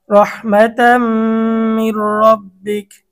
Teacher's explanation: র মোটা, র এর উপরে জবর।